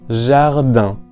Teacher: En la palabra jardin, lo más difícil es, posiblemente, la vocal nasal en, que es como la A del español, un poco más cerrada quizá y frontal, pero nasalizada.